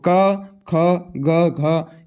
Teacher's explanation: क ख ग घ ये जो होते हैं आपके कंठव्य होते हैं। क्या होते हैं, कंठ से बोले जाते हैं।